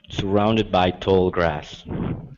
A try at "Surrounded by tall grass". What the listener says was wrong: Now, with tall, instead of saying to, o, with an o sound, open the mouth up nice and wide. Ah, tall. Tall grass.